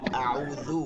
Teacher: আউযু এটা জাল, জিপার আগা থেকে